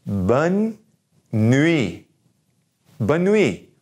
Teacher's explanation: that last T is gonna be silent